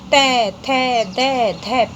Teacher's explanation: इन व्यंजनों का उच्चारण करते समय हमारी जो जीभ है वो मुख विवर में कहाँ पर टच कर रही है? दांतों को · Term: दंत्य